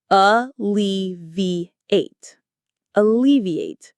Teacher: Hear that stress on the second syllable. Lee. Alleviate.